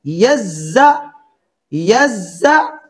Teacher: جی پہلا لفظ ہے یزکا، یا کے اوپر زبر تو اس کی آواز ہوگی یا، زا کے اوپر زبر تو اس کی آواز ہوگی زا، زا کے اوپر شد بھی ہے، یا کو زا کے ساتھ سختی سے ملا کر پڑھیں گے یزا، یزا، دو آوازیں ہیں یا زا، پھر دونوں کو آپس میں سختی سے ملائیں گے یزا۔